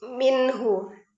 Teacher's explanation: Karena ha salah satu huruf halqi atau huruf tenggorokan ya, maka dibacanya jelas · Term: izhar halqi